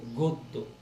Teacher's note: পরের অটা আর অ না, অটা ওর মতন উচ্চারণ হয়েছে বলেই শব্দটা হয়েছে গদ্য